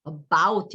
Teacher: 이게 어는 굉장히 힘이 빠졌어요 앞에. 그래서 about 이렇게 되잖아요. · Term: 슈아